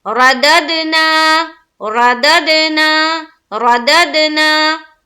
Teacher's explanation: نون کے اوپر کھڑا زبر ہے تو ایک الف کے باقدر کھینچیں گے